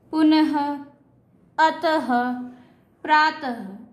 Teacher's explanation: विसर्ग, इसमें 2 डॉट लगते हैं और इसको ह की फॉर्म में हम प्रोनाउंस करते हैं। पुनः, अतः, प्रातः, ये जो 2 डॉट हैं इनको हम ह के उसमें ले रहे हैं, ह की साउंड में ले रहे हैं।